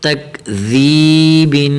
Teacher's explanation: یہاں کاف کو باریک کرنا ہے، ذال بالکل نرم، ذال کو یا کے ساتھ ملانا ہے